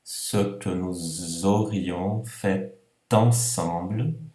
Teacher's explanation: liaison do S virando Z